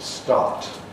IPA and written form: stɑːt (START)